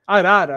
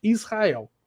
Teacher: se eu tenho uma consoante, né, travando a sílaba, só vou ter o R forte